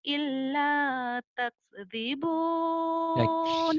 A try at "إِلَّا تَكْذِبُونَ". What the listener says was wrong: Hamasnya nggak keluar.